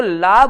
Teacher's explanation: जीव कहां लगती है दातों की जड़ों पे लगती है ना की आपके तालु पर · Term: दांत मूल